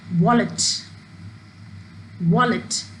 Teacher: When we speak the word wallet, the stress is on the first syllable